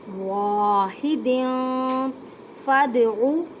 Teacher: دال ساکن ہے اس وجہ سے کلکلا کریں، کلکلا کا مطلب ہے ہلا کر پڑھنا